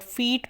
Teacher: जैसे हम word फीट बोलेंगे तो इसमें जो 1 और 2 नंबर पे साउंड्स हैं ये और ये वाली साउंड्स प्रोड्यूस होंगी। फीट जब हम बोलेंगे तो हमारे लिप्स स्प्रेड पोजीशन में रहेंगे। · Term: स्प्रेड लिप्स